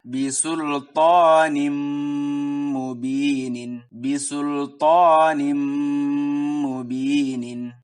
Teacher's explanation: Tanwinnya langsung dimasukkan ke mim dan didengungkan. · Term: idgham bigunnah